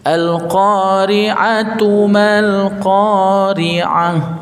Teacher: ketika diwakaf saja dia bunyinya ha yang keluar dari pangkal tenggorokan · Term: tak marbutoh